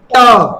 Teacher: ट वर्ग को स्पर्श व्यंजन भी बोलते हैं या इसको बोलते हैं मूर्धा से बोलते हैं। जैसे ट देखिए तालू को ले जा के जीभ के पिछले हिस्से में चिपका दे रहे हैं कि नहीं?